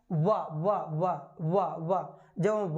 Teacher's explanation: वी का उच्चारण करें तो हमारे होंठ दोनों मिल रहे हैं